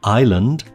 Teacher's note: A few words that you might expect to have the / s / sound in them, like island / ˈaɪ.lənd /, do not have the / s / sound. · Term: silent S